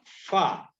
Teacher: ujung dua gigi seri atas bertemu bibir bawah bagian dalam